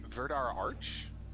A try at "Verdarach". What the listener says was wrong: No, because the R's in the wrong space for it to be arch. It has to be round. Verdarac.